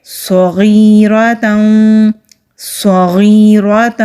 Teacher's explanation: لا یغادر، لا یغادر صغیرۃ ولا، یہ صاد ہے، مستعلیہ حروف میں سے ہے تو موٹا پڑھیں گے۔ صاد کو سین کی طرح نہیں پڑھا جاتا تو موٹا پڑھیں گے